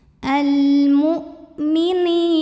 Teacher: Berikutnya ada hukum alif lam yang dinamakan dengan alif lam qamariyah. Karena alif lam menghadapi huruf qamariyah yaitu mim, maka lam sukun dibaca dengan jelas atau diizharkan. Biasa disebut dengan izhar qamari.